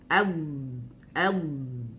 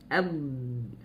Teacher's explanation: Dia tebal, dia mengalir suara tapi napasnya tidak mengalir. Napas tidak mengalir tapi suaranya mengalir.